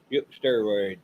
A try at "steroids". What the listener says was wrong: You always say it like there's 2 R's in there.